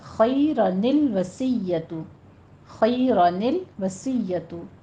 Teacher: ال، لام قمریہ جو ہے یہ ہمارے پاس آ رہا ہے، تو دونوں ساکنوں کو جوڑا گیا ہے۔ جوڑنے کی کنڈیشن میں یہ چھوٹا نون پیدا ہوتا ہے جسے نون قطنی کہتے ہیں